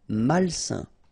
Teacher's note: A-I-N together, it's a nasal and it's un.